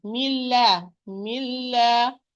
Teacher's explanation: When we have idgham kamil, both are not working. And the noon is fully merged with the lam. Milla, milla.